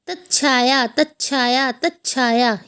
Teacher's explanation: त में छ प्लस होगा तो आधा च और छ की ध्वनि आएगी। तच्छाया तच्छाया तच्छाया, ये देखिए तच्छाया की आवाज़ आ रही है।